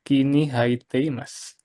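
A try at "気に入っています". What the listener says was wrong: Ini cara bacanya bukan kini haite, tapi kini ite, Mas ya. bacanya I ya. I.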